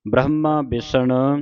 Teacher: ਇੱਥੇ ਹਾਹ ਲੱਗਾ ਵਿੱਚ ਬ੍ਰਹਮਾ ਪੂਰਾ ਹਾਹ ਬੋਲ ਕੇ ਜਾਣਾ।